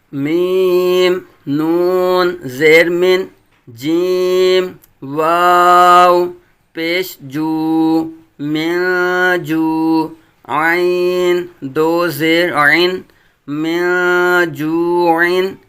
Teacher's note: نون ساکن کے بعد حروف اخفاء میں سے جیم، اخفاء کا قاعدہ ہوگا یعنی غنہ کریں گے ، واو ساکن سے پہلے پیش واو مدہ، عین تنوین منون،